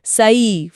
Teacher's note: तो यह होगा असइफ। स्वाद से या की तरफ स्लाइड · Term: या लीन